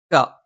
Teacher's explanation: നാവിന്റെ ആരംഭം മേലെ അണ്ണാക്കിലാണ്